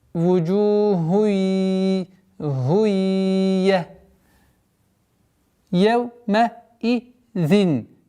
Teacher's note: Здесь у нас ассимиляция, частичная ассимиляция. Идгам бигунна накаса.